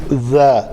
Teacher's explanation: ذال کے لیے نوک لسان جو ہے وہ اوپر والے دو دانتوں سے آ کے ٹکراتی